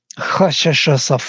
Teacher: They are voiceless frictions, or they are called also sibilants sometimes. They are hissing sounds. Yeah? They have no voice. They are voiceless. And they are frictions. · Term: fricatives